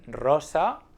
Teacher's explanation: pronounce words with a rolling r when we have an r at the beginning of the word like in rosa